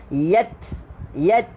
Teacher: Huruf ta bukan huruf lantun. Jadi kita tak boleh baca yatlu, tak boleh. Ta angin, ta angin yang keluar.